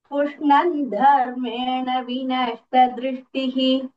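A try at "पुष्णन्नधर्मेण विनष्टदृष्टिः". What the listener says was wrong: पृश्नन्न. So it will be Nyamudagama Sandhi adharmena. So we have to say both the nas to make it adharmena.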